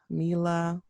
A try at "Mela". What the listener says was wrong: Mela, M-E-L, like melanin. So Mela